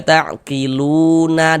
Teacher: Maka panjangnya lu tetaplah menjadi mad thobi'i dan dibaca dengan panjang dua harakat.